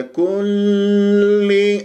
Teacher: ولا تطل جريان الصوت في اللام المشدده